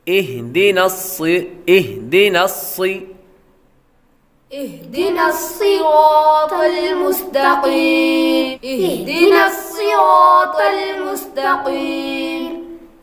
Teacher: نسی آپ نے باریک پڑھا، یہ سین پڑھا، سین نہیں یہاں پر بلکہ صاد پڑھنا ہے۔